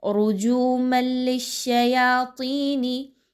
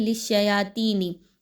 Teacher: رُجُومًا لِلشَّيَاطِينِ، اب اس کو لوگ پڑھتے ہیں لِلشَّيَاطِينِ، یہ غلط انداز ہے. تا کی طرح طا کو نہیں پڑھنا، آپ نے اس کو اچھے طریقے سے گول کر کے موٹا کر کے پڑھنا ہے